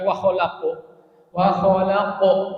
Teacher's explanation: Karena tafkhim ya. Qaf itu huruf tafkhim, maka posisi mulut kita itu tidak boleh ditarik jadi senyum gitu. Ya, kalau huruf-huruf tafkhim itu kita nggak boleh senyum.